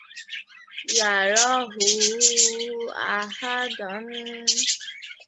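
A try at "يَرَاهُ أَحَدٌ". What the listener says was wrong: Okay, this is tanween of dhamma. Ahadun. Yarahu ahadun.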